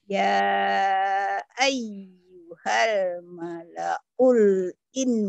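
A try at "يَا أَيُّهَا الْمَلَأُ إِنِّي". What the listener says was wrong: Kok mala'ul? Mala'ul dapat dari mana ulnya? Ya ayyuhal mala'u.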